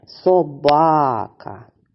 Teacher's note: наголос у слові собака падає на другий склад